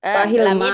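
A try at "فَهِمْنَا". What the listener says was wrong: Fahim, bukan fahil ya. Fahimna.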